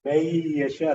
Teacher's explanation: Idgham is total assimilation of the noon. You lost the whole noon totally. You doubled the letter after the noon sound.